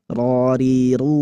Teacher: Harus takrir. Takrir itu getarannya lembut.